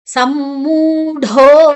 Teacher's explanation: ಮು ಮತ್ತೆ ಮು ಎರಡು ಕೂಡ ಒಂದೇ ಜಾತಿಯ ಅಕ್ಷರಗಳು ಅಲ್ಲಿ ಸೇರಿಕೊಂಡಿದೆ, ಸಂಯುಕ್ತಾಕ್ಷರ ಆಗಿದೆ. ಸಮ್ಮೂಢೋ ಢೋ ಮಹಾಪ್ರಾಣ, ಢೋ ದೀರ್ಘಾಕ್ಷರ ಕೂಡ